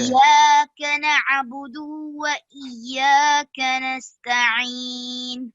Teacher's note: दू को आपने बहुत लंबा कर दिया